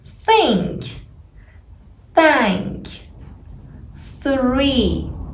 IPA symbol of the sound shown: θ